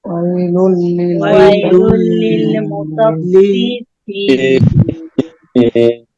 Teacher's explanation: ওয়াই জবরের বামে জসমলা ইয়া আসছে, নরম করিয়া তাড়াতাড়ি পড়তে হবে।